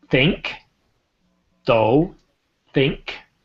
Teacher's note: So we got that TH sound with though, right? I stick my tongue between my teeth.